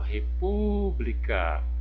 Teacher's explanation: O pu é a minha sílaba tônica.